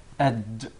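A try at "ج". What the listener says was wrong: Not ag. There is no gim in Arabic. It is aj. Aj. It seems like it comes from the middle of the mouth. Aj. Aj.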